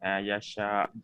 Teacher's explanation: Dia boleh baca 4, 5 atau 6. Sebab tanda panjang bertemu dengan huruf hamzah. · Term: ma'arid ala hamzah